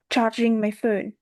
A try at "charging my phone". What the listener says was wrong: So there's confusion between the ch and the tr sound. treating.